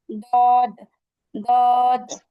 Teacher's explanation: জিহ্বার গোড়ার কিনারা সামনের উপরের এক পাশের দাঁতের গোড়ার সঙ্গে লাগিয়ে উচ্চারণ হয় দদ